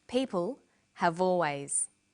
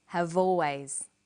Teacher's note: in conversation we link the final consonant sound v with the initial vowel sound or. Have always.